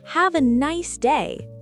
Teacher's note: Your voice should be cheerful. Let it rise at the end like you're singing.